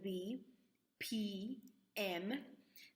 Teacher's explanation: the bilabial which is our both lips together